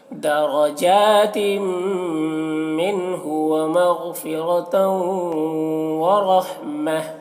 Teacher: ورحمہ را کو پر پڑھنا ہے یہاں پر اور وقف کی صورت میں گولتا ہائے ساکنہ سے بدل جائے گی